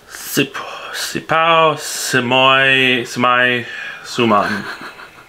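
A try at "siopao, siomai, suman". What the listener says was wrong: Babe, you're reading it wrong. If you read like S-I-O in Filipino, that's like shaw. Okay, read it again. Like shomai.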